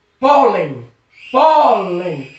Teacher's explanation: Percebeu que o pó, a sílaba pó, ela é mais forte. Então acentua-se. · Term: sílaba tônica